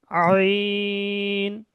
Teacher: আইনটা উচ্চারণ হয় পুরো গলার মাঝখান দিয়ে বা হলক বা কণ্ঠনালীর মাঝখান দিয়ে। আইন, গলা একটু চেপে।